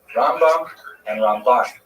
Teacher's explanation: The accent, if you want to be one of the cognoscenti and go to yeshiva and impress all your friends there, Rambam is pronounced with the emphasis on the first syllable, Rambam, and Ramban is pronounced with the emphasis on the second syllable